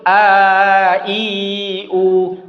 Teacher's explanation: Bunyi A yang panjang tu dari rongga mulut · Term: bunyi panjang